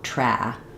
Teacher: So my um mouth is more open than it is for the h sound. And the back of my tongue is lifted. The front of my tongue is down.